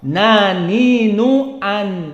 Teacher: nun adalah dari sifat al-jahr, muni'a jaroyan an-nafas, sehingga dibaca tanpa keluar nafas